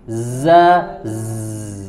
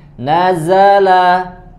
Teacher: Sod, zai dan sin. Ada suara seperti suara lebah. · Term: sofir